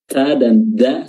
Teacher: huruf Dal ini sama makhrajnya dengan huruf ta ya ujung lidah bertemu dengan pangkal gigi seri atas